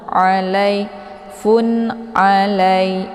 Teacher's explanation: posisi ain ini letaknya di tenggorokan bagian tengah ya. Jadi dia bacaannya agak sedikit lunak. Bukan a ya.